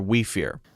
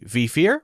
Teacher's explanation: So it's saying we sounds like V.